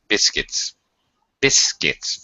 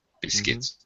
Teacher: We don't even pronounce the U. It just sounds like biscuits. Biscuits. First syllable stressed.